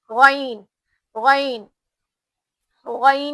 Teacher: तो ये जो हमारा एक खरखर पना रहता गईन और ख में, हल्का सा रहता गईन में, ख में ज्यादा रहता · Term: गईन की आवाज